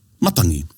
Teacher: we always stress on the first syllable